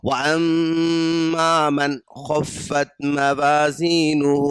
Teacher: جب خا آ جاتا ہے تو اس کو اظہار کہتے ہیں، ناک میں آواز کو نہیں چھپائیں گے، فوراً آگے بڑھ جائیں گے